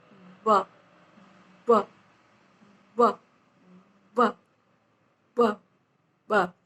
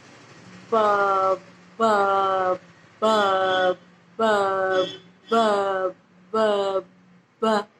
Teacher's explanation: ब ब ब ब में दबाव युक्त स्पर्श होता है अपर लिप और लोअर लिप दोनों के बीच में।